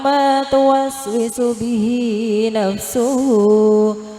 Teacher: Bihi hi adalah bacaan mad silah mad silah, karena hi dan hu dibaca panjang